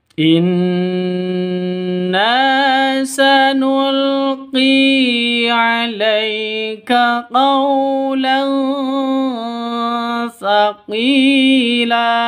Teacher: Di sini ada nun tasydid ya, ada nun tasydid berdiri sendiri gunah musyaddadah dengung dua ketukan. Na panjang dua ketukan karena ada alif diawali dengan fathah.